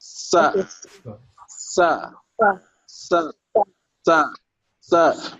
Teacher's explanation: This one, this particular one is called sa, from the tip of the tongue behind the upper incisor